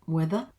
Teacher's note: there's no linking R here because it's followed by a C, the consonant C